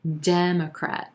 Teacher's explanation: international attention number 14 democrat democrat we've got three syllables here emphasis on that first syllable and the e as in red vowel sound democrat then we've got a schwa in that second syllable and